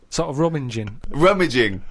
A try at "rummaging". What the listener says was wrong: Rummaging. No! There's no N before the first G. Rummaging.